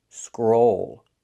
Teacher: Pronunciation, use the long O, scroll. Scroll, plus a dark L. Scroll. Like in old and cold.